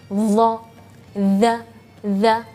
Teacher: tidak ditekan kalau Gigi ee dua gigi seri ee atas ini menekan lidah dia akan mengeluarkan angin yang berlebihan